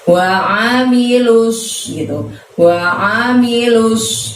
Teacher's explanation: lu-nya langsung masuk ke huruf yang bertasydid di sana, yaitu huruf shod, maka lusnya langsung otomatis mulutnya ke depan